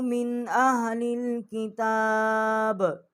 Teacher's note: اوپر ہم غنہ کرتے اگر یہ آگے حروف حلقی نہ ہوتا، آگے حروف حلقی ہے اس لیے ہم اس کے اوپر غنہ جو ہے وہ نہیں کر رہے